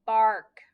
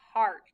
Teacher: when we see that ar it just makes the r sound we don't hear the a at all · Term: r controlled vowel